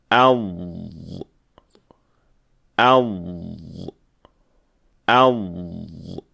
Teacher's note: رخاوہ یا رخوہ کا اطلاق۔ اس کا مطلب ہے ضاد کی آواز کا جاری رہنا۔